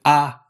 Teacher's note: some kind of ah sound, with your tongue nearly flat at the bottom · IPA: /a/